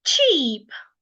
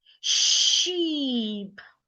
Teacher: the difference between the ch sound and the sh sound is how fast you release the sound. Should you release the sound fast, you will be articulating the ch sound.